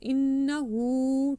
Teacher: wa innahu, again ha is with ulta pesh. Okay, reverse damma, you have to stretch it for two counts. Innahu, two counts.